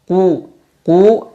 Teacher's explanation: Qul auzubirabbinas pada ayat ini kata Qul Q sifatnya istila maka dibaca dengan tebal tafkim qu dan disertai dengan memonyongkan mulut